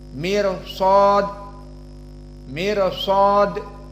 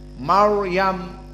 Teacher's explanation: Maryam dan mirsad berbeda rnya di sini mirsad muraqqaqoh Maryam mufakhamah